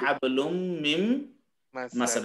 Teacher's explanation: ঠিক আছে, হাম্মালাতাল হাতাব ফি জিদিহা হাবলুম মিম মাসাদ, এই যে মিন মাসাদ, মূলত মিন মাসাদ না হইয়া নুন সাকিনের পরে মিম আসছে, এটা মিম মাসাদ হয়ে গেছে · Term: ইদগাম